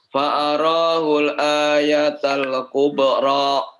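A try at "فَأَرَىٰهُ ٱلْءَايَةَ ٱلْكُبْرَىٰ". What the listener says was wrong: Hati-hati apa namanya terjadi tawallub atau mengkolkolahkan yang bukan kolkolah ya. Fa'arahul ayatal kubra. Jangan tal ya, hati-hati. Fa'arahul seperti itu. Jangan sampai fa'arahul ayatal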